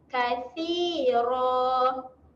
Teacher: huruf sa, huruf yang jeli lidah. Kena keluarkan lidah. Kathira. Okey, kalau kita nak berhenti dekat sini, Ra ni kita akan berhenti dengan panjang 2 harakat.